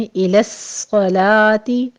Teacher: إِلَى الصَّلَاةِ میں لو نہیں کہنا آپ نے، إِلَى الصَّلَاةِ صاد کو پر پڑھتے ہوئے تشدید سختی کیجئے، آگے لام کو باریک رکھنا ہے، اوپر صرف فتح قائمہ ادا کرنی ہے۔